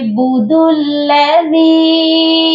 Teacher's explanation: دال کو ہم لام کے ساتھ ملائیں گے، بُدُ الَّذِي، اور دال کے ساتھ یا مدہ ہے، اس کو ہم نے ایک الف کے برابر لمبا کر کے پڑھنا ہے اور دال کو نرم بھی پڑھنا ہے۔